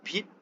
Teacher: when you pronounce the p sound at the beginning, you release a burst of air after the articulation of p. This burst of air is the aspiration.